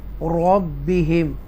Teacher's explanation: extra stress کے ساتھ را مشدہ کو پڑھیں گے